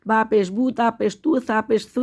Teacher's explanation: اس کو جلدی جلدی پڑھنا ہے، کھینچنا نہیں ہے بالکل بھی، اور ہونٹ گول کر کے پڑھنا ہے.